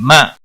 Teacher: हमजा साकिन को थोड़ा झटके के साथ अदा करेंगे